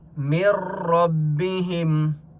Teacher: یہاں پر ادغام ہو رہا ہے بغیر غننے کے غنہ نہیں ہوگا ادغام ہوگا ٹھیک ہے.